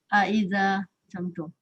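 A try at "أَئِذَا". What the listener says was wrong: Oh, kalau gitu masih lagi ke I. Itu bukan I. Sebut macam huruf H. Macam he, H-I. Ini Ustaz nak permudahkan faham, tapi bukan he betul-betul ya.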